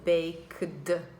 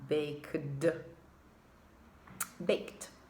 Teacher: after the k sound, the tongue goes into the d, baked. You can feel the tongue going slightly up, baked, baked.